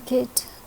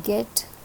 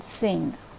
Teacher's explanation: the back part of the tongue is touching the rear portion of the roof of the mouth